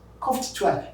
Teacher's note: any voiceless consonant sound taking ed that ed is t